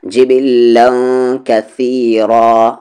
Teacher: تنوین کے بعد کاف اخفا ہوگا، جبلا کثیرا، را ہیوی ہوگا اور رکیں گے تو دو زبر میں سے ایک زبر ہٹ جائے گا، کثیرا.